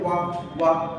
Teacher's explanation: दांत में ओठ थोड़ा सा अस्तर, वाह करेंगे तो वर्तुलकार होता है और इसके बाद यहाँ नाम थोड़ा वाह थोड़ा सा। तो वाह का उच्चारण स्थान जो है दांत और ओष्ठ है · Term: दंतोष्ठम